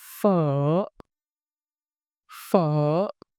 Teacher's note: Pitch starts mid, dip down slightly, then rise again. Throat filling, slight tightening as your voice dips, then a smooth release at its rise.